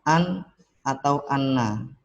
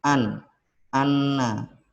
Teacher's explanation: huruf nun yaitu keluar dari ujung lidah menempel pada bagian gusi atas